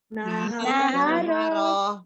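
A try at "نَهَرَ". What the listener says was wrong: Pokoknya tetap dibuka ro, dibuka ya. Ya, jadi yang bergerak tuh lidahnya aja, mulutnya tetap dibuka. Tidak naharo gitu enggak ya?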